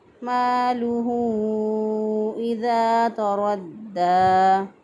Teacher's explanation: مالہ میم زبر الف ما الف مدہ ہے، ایک الف کے برابر لمبا کریں گے